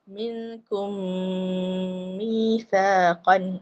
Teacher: Sedangkan cara yang betul dia ialah minkum, masa sebut kum, ku je muncung mulut, lepas tu bila dengung tu kita tarik kedudukan asal